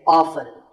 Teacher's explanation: the more common pronunciation is with the T silent.